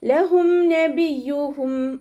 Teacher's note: മീം സാക്കിനെ നമ്മൾ വ്യക്തമാക്കി മണിക്കാതെ ഓതാട്ടോ. ഇവഹാർ ഷഫവി മീം സാക്കിനയുടെ നിയമത്തിലുള്ള ഇവഹാർ.